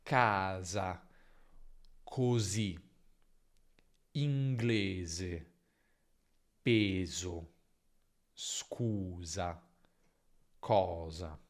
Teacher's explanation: nella pronuncia neutra moderna, quindi il modello che ho introdotto all'inizio, si tende ad avere sempre z tra vocali